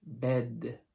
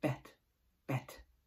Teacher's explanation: when you have a D at the end of the word you have a longer vowel and when you have a T at the end of the word you have a shorter vowel · so the vowel bed is longer it is longer it's not totally long bed and it's shorter in bet